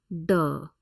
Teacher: retroflex D sound